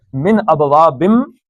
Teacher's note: نون ساکن کے بعد حمزہ آ گیا ہے تو نون کا اظہار ہوگا، من نہیں پڑھا جائے گا بلکہ من ابوابم۔